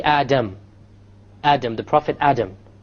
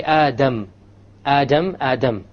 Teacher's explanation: the tip of the tongue goes and touches along with the front part of it touches the area behind the gums · the difference is that the English D only uses the tip · So when you try to pronounce the English D, you only use the tip. When you say the Arabic dal, you use the tip along with the upper portion.